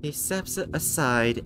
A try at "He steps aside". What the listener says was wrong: This sounded like you said he sepsis aside. He sepsis aside.